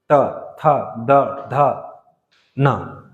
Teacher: त वर्ग में क्या आएगा, दांत से, तो दांत में टच होगा, देखना जीभ, त थ द ध न, दांत में टच हो रहा है जीभ।